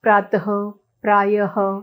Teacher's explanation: विसर्ग प्रातः, प्रायः जो है अंत में ह की ध्वनि का उच्चारण होता है